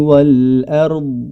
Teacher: mubtiltilun pada kata Wal ARD yang diwakafkan sebagaimana yang kita baca huruf dad memiliki sifat istitalah artinya suara yang memanjang jadi tidak langsung berhenti suaranya